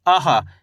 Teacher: आ के बाद हा का उच्चारण निकलेगा, यानी कि आ के बाद हवा छोड़ो मुंह से आहा। इस तरीके से।